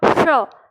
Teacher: आप मूर्धा की जगह जीभ ले जा के बोलिएगा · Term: मूर्धा श